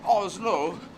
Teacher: a Norwegian word which is Oslo which seems to be the emphasis on both syllables